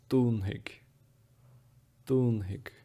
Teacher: The F here is said as a H. And then as I mentioned in the last video, the slender DH becomes a slender G.